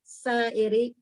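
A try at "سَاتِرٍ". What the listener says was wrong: Satirin. Bu huruf ta itu bukan hamzah.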